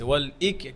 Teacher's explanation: কাফে হামস আদায় করেন